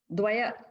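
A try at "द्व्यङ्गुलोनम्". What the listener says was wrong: Dvaya, dvya. Dvya, just dvya, dvya. Dvya. Just it's like, like, imagine there's no A there. A is only at the end. Dvya.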